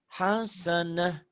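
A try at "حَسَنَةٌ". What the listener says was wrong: Tonnya jangan dibaca. Tonnya jangan dibaca, kan dihentikan.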